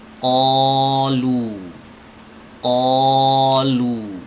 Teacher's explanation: Ketika mengucapkan ko itu hanya menebal saja tapi nggak monyong. Qalu, qalu, lu monyong, ko enggak ya.